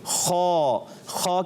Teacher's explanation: हलक के ऊपर वाले हिस्से से खौ अदा होता है